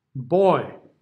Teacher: be sure it doesn't close down to an E · we start with the open o right open o followed by the I